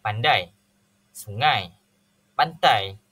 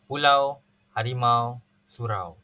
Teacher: Diftong ialah gabungan dua vokal yang disebut dalam suku kata. Bunyinya berlaku secara berurutan, disebut dalam satu hembusan nafas dan berlaku geluncuran. Dalam bahasa Melayu, hanya terdapat 3 diftong, iaitu AI, OU dan OI.